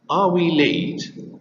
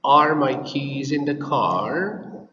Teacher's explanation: pay attention to the intonation because it's yes no question and it's rising intonation